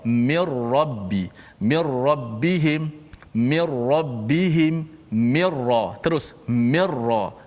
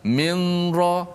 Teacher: Jangan minra. Jangan ada unsur-unsur nun lagi. Kerana nun masuk secara total masuk dalam ra. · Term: idgham bila gunnah